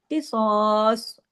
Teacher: یعنی رکنے کی صورت میں بھی صاد ہیوی ہی پڑھا جائے گا